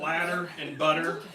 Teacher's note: you tap your tongue on the top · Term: tapped R